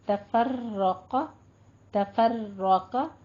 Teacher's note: रॉ को भी पुर पढ़ेंगे, कौफ को भी पुर पढ़ेंगे